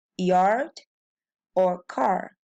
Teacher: In these words we can see clearly the silent R in yard or car. For us, Portuguese speakers, we cannot identify the sound of R here.